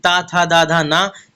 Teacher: ये त वर्ग दंत में आता है